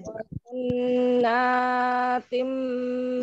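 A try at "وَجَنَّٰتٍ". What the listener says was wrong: Jangan terlalu panjang. Satu ayunan saja.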